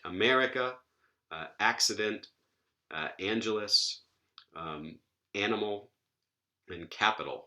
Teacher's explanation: we stress the ante penultimate syllable in English · all of these have short vowels in them or schwa vowels and no coda consonants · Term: light